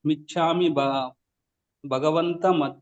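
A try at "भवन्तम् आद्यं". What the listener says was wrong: ಭವಂತ ಭಗವಂತ ಅಲ್ಲ ಭವಂತ ಮಾಧ್ಯಂ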